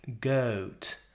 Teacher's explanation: For a goat, she needs to start with a slightly more open vowel sound. So goat in British English sounds more like goat, not goat, goat.